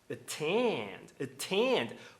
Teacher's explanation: Porque a segunda vogal não é átoma, é tônica, ela tem força.